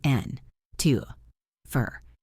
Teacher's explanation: Your ear is listening for and, to, for, but you are hearing n, to, for. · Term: reduced sounds